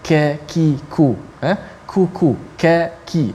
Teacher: Kaf dia nipis, dan kaf ada angin sedikit, ada hamas, ka. Kalau kita sebut ka, ki, ku, ku, ka, ki, dia ada angin sikit. Walaupun tak mati, kalau mati lebih banyak anginnya. · Yang mana qaf dengan kaf makhrajnya dekat, tetapi sifatnya berbeza. Kaf dia nipis, dan kaf ada angin sedikit, ada hamas